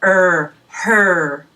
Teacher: it's relaxed but your tongue is really curled back in your mouth when you make this sound it's a hard sound ah so really stress that tongue muscle